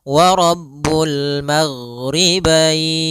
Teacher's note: huruf ghain tidak ada sifat qalqalah, tidak ada sifat pantulan.